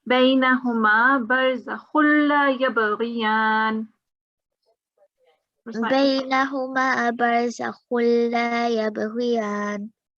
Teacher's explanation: You did pronounce a gunna, which you shouldn't, because before lam and before ra, you should not have a gunna sound, even if the tanween comes up here.